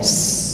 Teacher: Kalau saya baca atau as, itu huruf beda dan tempat keluar beda. Kalau shin dari tengah lidah, kalau sin dari ujung lidah, jangan campur.